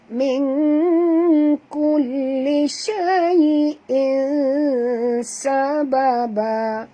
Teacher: Sorokkan bunyi, sembunyikan bunyi tanwin ini ke dalam huruf sin disertai dengung 2 harakat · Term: ikhfa hakiki